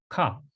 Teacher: It's short, it's high, it's K-A, and the A sounds for ah, so it's ka, and it's in the back of the throat.